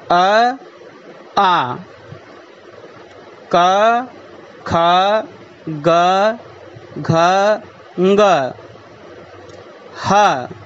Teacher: एते वर्णा कंठवर्णाः सन्ति। अर्थात् एषाम् उच्चारणं कंठ इति स्थानात् भवति।